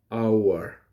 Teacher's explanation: the letter H is silent for hour. Therefore, it becomes an hour because the beginning letter or sound is ow, hour. It's not hour.